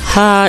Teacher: like the P in English pie, but with a stronger pop of breath, similar to P plus the following H in English, hop high.